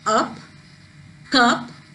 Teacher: when we pronounce the words like up cup the uh sound is elongated